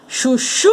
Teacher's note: A sílaba tônica é a última aqui, ó.